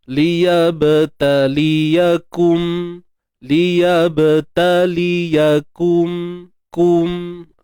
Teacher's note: untuk ba yang bertanda sukun, qalqalah sughra